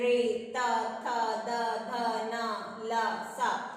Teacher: दंत्य जिनमें जीभ दांत को छूकर शब्द निकलते हैं